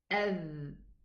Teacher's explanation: Actually, the tongue, as though it goes, the tip of the tongue, goes a little bit upwards to reach the edge of the upper incisors. You should be feeling vibration, okay, in the lips and in the tongue, but there's no air. There's no air when you pronounce the letter dhal, because they are actually touching.